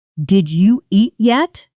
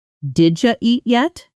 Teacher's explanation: The did you blends into something closer to did ya.